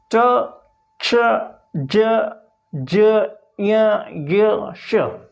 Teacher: इन वर्णों को जब बोलते हैं हम तो अपनी जीभ ऊपर तालु के ऊपर टच होती है, इसे हम तालव्य वर्ण कहते हैं।